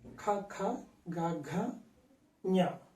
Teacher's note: నాలుక యొక్క మొదటి భాగం ఎక్కడి నుంచి అయితే నాలుక మొదలవుతుందో ఆ యొక్క నాలుక మొదలును మనం కొండ నాలుక దగ్గరగా ప్రయత్నం చేసి పలుకుతున్నాం వీటిని · ఖ, ఖ, గ, ఘ, ఞ ఈ యొక్క అక్షరాలను పలికేటప్పుడు కంఠం దగ్గర ఈ యొక్క నాలుక వెనక భాగాన్ని అంటే నాలుక మొదలుని ఇక్కడ టచ్ చేస్తాం మనం దగ్గరగా. అంటే నాలుక మొదటి ప్రాంతాన్ని మనం అబ్జర్వ్ చేయాలి. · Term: కంఠ్యములు